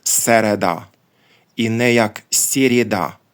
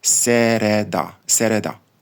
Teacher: у а не як О як дехто намагається читати літера єсть ми читаємо її як е або є з деяким пом'якшенням попереднього приголосного звуку але не геть м'яко не так як у російській мові але також і не твердо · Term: напівм'яко